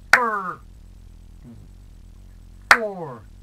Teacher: No hard stress second syllable. It's the first syllable.